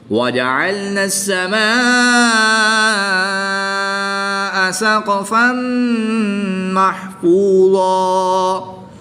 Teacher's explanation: دو زبر کی تنوین کو وقف کی حالت میں الف مدہ سے تبدیل کر کے پڑھیں گے۔